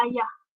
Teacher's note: vokal A, iaitu lidah kita direndahkan serendah-rendahnya.